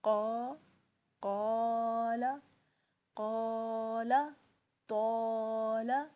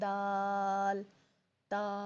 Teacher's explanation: الف کے پہلے اگر حروف مستعلیہ میں سے کوئی حرف آ جاتا ہے تو وہ الف بھی موٹا پڑا جائے گا